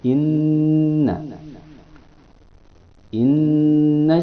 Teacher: dibacanya berdengung dua harakat pada hidung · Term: gunnah